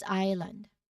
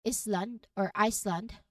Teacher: Even though you see the S, we pronounce it as island, okay? You go straight from I vowel to the L sound. We don't say it as Island or Iceland, but we say it as island, okay?